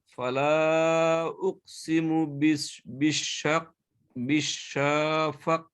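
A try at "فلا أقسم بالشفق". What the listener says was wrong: না ফা টানছেন কি জন্য কি কায়দা বা কি মত এখানে বিশাফা হ্যাঁ ওই যে ফালার পরে কফটা আছে না এখানে কলকলা ছুটে গেছে হ্যাঁ ফালা উকসিমু বিশাফাক শাফাক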